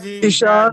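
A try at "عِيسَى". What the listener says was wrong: জি টান দেওয়া যাবে না, ইশা জি,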